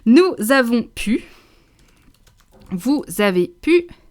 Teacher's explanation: All those are liaison, which means we're dragging the sound of the consonant all the way to the beginning vowel of the word afterwards